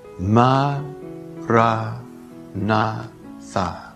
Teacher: say it in four equally stressed syllables